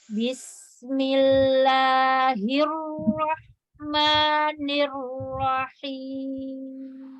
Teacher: Tipiskan ketika dia kasrohnya hir. Bismillahirrahmanirrahim ya, hirnya tipis, rohnya baru tebal.